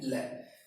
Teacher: ध्यान रखना, ये लय पार्श्विक व्यंजन में आएगा। तो लय बोलेंगे तो हमारी जीभ ऊपर घूम जाएगी, वहां एक जगह रुक जाएगी और दोनों साइड से हवा बाहर निकलने के बाद जीवा नीचे आएगी